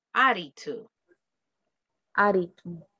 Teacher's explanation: según la fonética, pasa la doble T como R